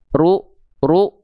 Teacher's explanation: Jadi rnya dibaca dengan vokal u dan angkat pangkal lidahnya. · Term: huruf tebal